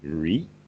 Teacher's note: his name is pronounced Achan Reet with a rising tone